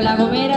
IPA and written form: la ɣoˈmeɾa (La Gomera)